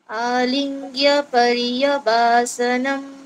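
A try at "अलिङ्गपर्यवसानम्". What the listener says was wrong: देख लो यहाँ पर देखो वा के बाद there is नो standing line सो it is वसानम. हाँ यू आर सेइंग वासनम.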